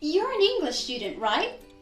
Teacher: that last tag part is always said in a rising intonation